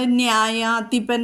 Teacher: യകാരത്തിന് മുമ്പ് നാ വന്നാൽ അത് ദന്ത്യമല്ല, പല്ലുമ്മ നാവ് മുട്ടില്ല. ആന എന്ന് പറയുന്ന നായാണ് അവിടെ വരുന്നത്, വർസ്യം.